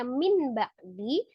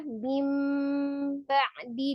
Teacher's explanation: Artinya merubah bunyi nun sukun menjadi mim sukun. Yang aslinya min ba'di dibaca mim ba'di disertai dengan gunnah. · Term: iqlab